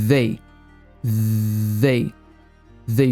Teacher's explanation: é a língua entre os dentes e faz um som de z e puxa o resto da palavra the the they Fit o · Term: th com z